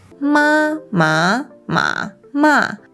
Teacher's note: They all have the same consonant and vowel, but because each pitch is different, there are different words